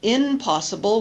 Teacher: p impossible is influencing the sound of the negative prefix and it's easier to say m because M and P are produced in the same region with both lips together bilabial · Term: regressive assimilation